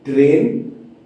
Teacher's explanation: when the R is rough, my tongue is right between my teeth. It needs to go touch the upper palate of the mouth.